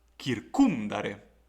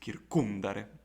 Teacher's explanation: the penult syllable is short, and so the stress must fall on the previous syllable. Therefore, the word will be read as kircumdare, and not, for example, kircumdare.